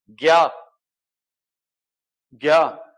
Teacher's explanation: तालव्य नासिक्य वर्ण है ज्ञ, ठीक है। तालव्य नासिक्य है वो, क्योंकि इया नासिक्य व्यंजन है।